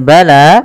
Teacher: panjangkan huruf lanya sepanjang dua harakat. Karena la di sini ada alif kecil yang datang setelahnya dan ia berada di atas huruf ya. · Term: mad thabi'i